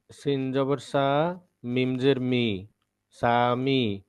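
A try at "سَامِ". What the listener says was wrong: এই যে দেখেন, সিন জবর সা, মিম জের মি, এই যে সিন জবর সা, এই সুরটা দেওয়ার কারণে এখানে একটা টান পড়ে গেছে।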